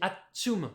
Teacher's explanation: quand on dit atchoum, là on a vraiment une belle pause avant la consonne occlusive, le T